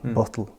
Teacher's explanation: You can hear that the stress is on the first syllable